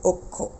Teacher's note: যুক্তবর্ণের যদি যদি উল্লেখ থাকে তাহলে অ এর উচ্চারণ সংবৃত হবে সংবৃত মানে অ এর উচ্চারণটা ও এর মত হয়ে যাবে